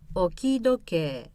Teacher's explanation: So once it goes low, it stays low. 置き時計、 The low in the third position changes to high to avoid a second rise.